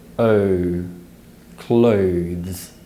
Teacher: transition from the schwa sound uh to the u sound oh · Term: diphthong